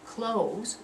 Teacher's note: close, one syllable ending in a z sound